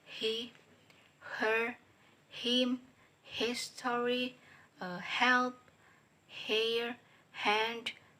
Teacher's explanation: Voiceless glottal fricative sound ha